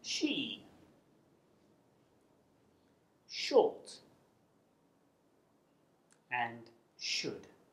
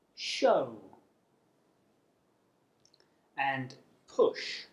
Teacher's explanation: it's unvoiced which means that you don't use your vocal cords to make the sound it's defined by the shape of your tongue and the position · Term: sh sound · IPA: /ʃ/